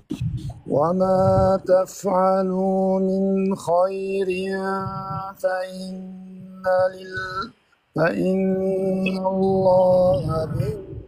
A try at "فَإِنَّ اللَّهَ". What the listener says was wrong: لا تفخ منه لا تفخ منه فإن الله نا نا ف أي شغلة عاد أشرحها بالنطق الصحيح من الأخطاء الشائعة أنت عاد تسويها ما شاء الله تبارك الرحمن